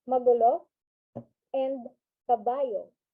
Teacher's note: but some of the words uttered by the speaker after emitting a normal tone, it is followed by a sudden falling intonation